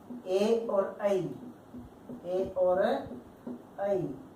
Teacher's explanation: कंठ तालु से बोले जाने वाले वर्ण होते हैं।